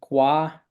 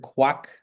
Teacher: Um but you can see that here we have gua which uh that little triangle to the left of the of the character is is a w sound a w medial between the initial consonant and the vowel ah